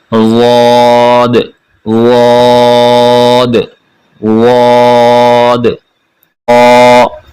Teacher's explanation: ज़ुबान को ऊपर वाले दाईं तरफ या बाईं तरफ दांतों के साथ लगाएंगे। दाईं तरफ वाले दांत या बाईं तरफ, बाईं तरीके से बाईं तरफ अगर पढ़ लें तो ये आसान है।